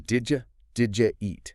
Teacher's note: the D sound in did, the Y sound in U are very close together in the mouth. When they blend, they create a completely new sound. >> A J sound.